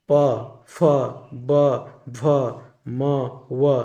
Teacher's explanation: इकर उच्चारण में दियो होंठ द्वारा श्वास कर अवरोध होवेला, मतलब कि रुकावट होता है। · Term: ओष्ठ्य